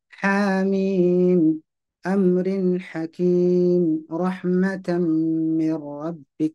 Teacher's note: Penyebutan huruf H harus dilepas ya, jangan jangan ditekan. Betul, memang makhraj dari H itu di tengah tenggorokan begitu. Tapi hembusan nafas itu harus lepas.